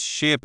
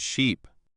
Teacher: The only real difference is in the middle sound. One has a short, quick I sound, like in sit. The other has a long, drawn-out E sound, like in see. These two words, ship and sheep, are a perfect example of a minimal pair.